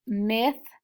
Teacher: when we say this word myth we know that the th is voiceless so we are going to market voiceless and we know that